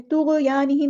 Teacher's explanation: تو اور غین دونوں ہیوی لیٹر ہیں، پورا ادا کرنے اور ہلانا نہیں ہے۔ طغیانہم، الف مدہ آ گیا، ایک الف کے برابر لمبا کرنا ہے۔ ہم ہاسم پر ادا کرنا ہے۔